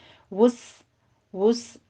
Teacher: वुस में आपने सीन को बारीक रखना है, इसको सौत नहीं बनाना।